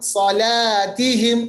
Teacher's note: صاد کو موٹا پڑھیں گے حروف مستعلیہ پر پڑھیں گے